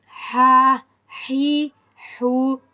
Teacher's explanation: حلق کے درمیانی حصے سے ادا ہوتا ہے، from the middle of the throat